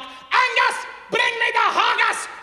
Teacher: you roll your R's a little bit more and you go bring your voice a little deeper, just like that, right? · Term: Scots accent